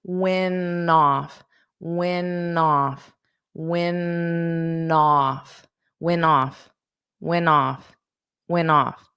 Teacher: You'll just have that flap T.